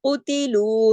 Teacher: اب دیکھیں قوف موٹا ہے نا, او, اب اس کو موٹا پڑھیں گے قوتلو, لیکن تا اور لو موٹا نہیں ہوگا. قوتلو, سب جو قاف ہے ایک حرکت پڑھا جائے گا, تا ایک حرکت, لیکن لو دو حرکات پڑھا جائے گا, کیونکہ لو کے ساتھ واو مدہ ہے